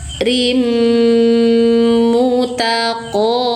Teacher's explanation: qo tebal. Pangkal lidah naik qo panjangkan satu ayunan.